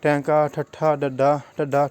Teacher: ਠੀਕ ਹੈ ਜੀ, ਉਲਟੀ ਜੀਭ ਜਿਹੜੇ ਹੈਗੇ ਆ ਜਦੋਂ ਅਸੀਂ ਇਸਦਾ ਉਚਾਰਨ ਕਰਦੇ ਹਾਂ ਤਾਂ ਸਾਡੀ ਜਿਹੜੀ ਜੀਭ ਹੈਗੀ ਆ ਉਹ ਉੱਪਰੋਂ ਤਾਲੂ ਦੇ ਨਾਲ ਟੱਚ ਕਰਦੀ ਹੈ ਅਤੇ ਜੀਭ ਜਿਹੜੀ ਹੈਗੀ ਉਲਟ ਹੋ ਜਾਂਦੀ ਹੈ